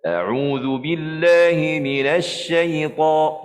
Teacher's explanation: tak perlu muncung. Huruf shin jangan muncung.